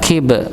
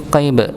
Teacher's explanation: maka dibaca seperti porsinya, huruf qaf tebal, huruf kaf tipis